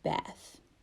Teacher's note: standard american english word bath bath ends in the voiceless th if that word is to be said in african american english the th is replaced with f changing the word to bath